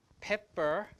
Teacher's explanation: In pepper, the first P is aspirated. The second P is not aspirated. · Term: aspirated P